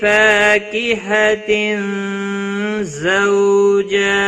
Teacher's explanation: تنوین کے بعد حروف اخفا کا زا آیا ہے، اخفا حقیقی ہوگا، گنہ کے ساتھ پڑھیں گے